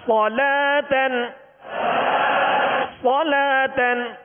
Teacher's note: صاد کو پر یعنی موٹا پڑھیں گے اس لیے کہ حروف مستعلیہ میں سے صاد میں سیٹی کی آواز پیدا ہوگی، اور اس کے ساتھ جو لام ہے لام کے ساتھ واو ہے، واو نہیں پڑھیں گے.